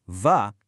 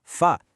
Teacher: For V, va, feel that? It vibrates. But F, fa, is just air. See? That little vibration is everything.